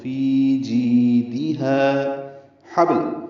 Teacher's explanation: ہا وسط حلق سے ادا ہوگا. اب اس سے پہلے ہا ہے، وہ اقصی حلق سے ادا ہوگا. · ہا الف مدہ ہے، یہ بھی 2 حرکات لمبا ہے. تو فی جیدها حبل، ہا وسط حلق سے ادا ہوگا.